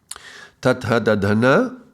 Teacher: are the regular dental sounds, they are going to be forward.